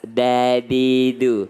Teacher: Jadi lidah, ujung lidah itu ketemu dengan belakang gigi atas. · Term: huruf dal